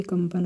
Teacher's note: कंपन में अं की बिंदी जो साउंड कर रही है वह मा की कर रही है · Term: अनुस्वार